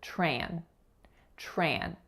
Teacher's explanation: So notice that the TR letters are combining as tr, tr. It's as if it were spelled CHR, not TR, because of assimilation.